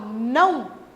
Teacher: Então aqui quando eu falo não, esse O tem som de U, ele é mais fraco e ele se apoia ao A para construir essa sílaba. Por isso, esse O aqui eu vou chamar de semivogal.